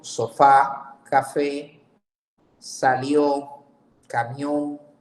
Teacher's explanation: Las palabras agudas, cuando se señala o que la acentuación fonética se resalta en la última sílaba